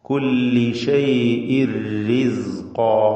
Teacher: ഷൈഇൻ എന്നതിലെ തൻവീനിനെ പൂർണ്ണമായും റായിലേക്ക് ലയിപ്പിച്ച് മണിക്കാതെ ഉച്ചരിക്കുക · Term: ഇദ്ഗാം ബിഗൈരി ഗുന്ന